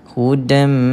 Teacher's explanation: Idgham ma'al gunnah. Idgham ni ialah memasukkan, memasukkan sebutan tanwin ini ke dalam mim. Ma'al gunnah, bersamanya kita kena dengungkan bacaan hudam.